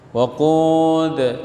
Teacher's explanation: Na ada alif mad asli, za ada alif mad asli, waqud mad arid disukun. Kemudian ada qalqalah, yaitu huruf dal yang dimatikan karena waqaf.